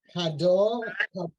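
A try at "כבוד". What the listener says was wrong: That's a vet. Kavod.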